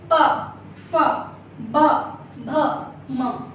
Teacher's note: जब ये शब्द बोलते हैं तो आपके ओंठ एक दूसरे में मिलते हैं। कैसे, आपके ओंठ एक दूसरे को स्पर्श करते हैं। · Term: पा वर्ग